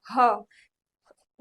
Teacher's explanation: ह गले से थोड़ा नीचे के भाग से ह उच्चारित होता है। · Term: काकल्य वर्ण